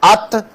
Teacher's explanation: اب جب آپ نے ات بولا تو آپ کو پتہ چل گیا کہ زبان کی نوک اور اوپر والے دانتوں کے قریب تالو پر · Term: مخرج